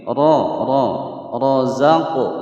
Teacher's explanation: huruf ra berharokat fathah kita baca tebal ya, karena hukum bacaan ra tafkhim.